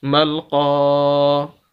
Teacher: اسی وجہ سے ہم پڑھ رہے ہیں ملقا، ورنہ پیچھے بتایا جا چکا ہے کہ زبر زیر پیش لفظ کو لمبا نہیں کرتے، لیکن یہاں پر زبر والے لفظ کو اس وجہ سے لمبا کر رہے ہیں کہ اس کے آگے الف مدہ ہے